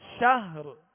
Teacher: آخر میں را پر، را کو ساکن کر کے آواز اور سانس توڑیں گے، یعنی را پڑھ کر صرف شاہ یوں وقف نہیں بلکہ شہر.